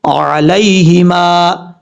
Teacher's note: یہاں پہ یا لین ہے یا مدہ نہیں، یعنی اس کو لمبا نہیں کریں گے، شارٹ کٹ پڑھیں گے۔